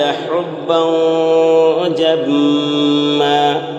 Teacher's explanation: حُبًّا جمع میں یہاں پر اخفا ہو رہا ہے، 2 زبر تنوین کے بعد حروف اخفا میں سے جیم ہے، اس لیے 2 زبر تنوین کی آواز کو ناک میں چھپا کر پڑھیں گے